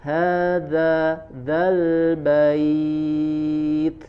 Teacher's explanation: baca dengan makhrajnya yaitu di ujung gigi seri bagian atas, sempurnakan dengan tempelkan dengan ujung lidah